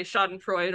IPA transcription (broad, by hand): ˈʃa.dənˌfɹoɪd